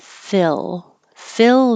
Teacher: is the short I so your tongue doesn't rise too high it stays a little bit lower